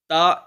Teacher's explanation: ता एक अल्प प्राण वर्ण है।